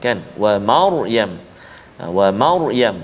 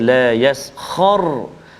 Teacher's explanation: huruf ra kita baca itu tebal, ra yang sukun sebelum dia berbaris di atas, sama ada di tengah kalimah atau hujung kalimah, maka kita baca ra tu bunyi tebal.